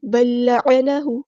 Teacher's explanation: پہلے لام بالکل ہی ڈراپ ہو جائے گا، دوسرا لام پڑھا جائے گا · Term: ادغام مثلین